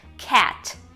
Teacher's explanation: Então, se a palavra tá terminando em tan, é um tan no final. Cuidado para não fazer tch, é t.